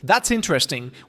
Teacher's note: With a slight upward inflection at the end